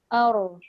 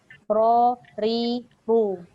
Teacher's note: Dia ada getaran sedikit dekat hujung. Jangan banyak. Jangan baca ar, ir. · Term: takrir